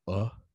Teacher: it's more of maybe something in between a lowercase e as in letter or bet something between that and maybe the sound of like a schwa